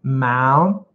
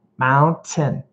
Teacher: I actually do say the T and my tongue goes right behind my teeth. So there's a tiny little space, as you can see here, to make that T sound in American English.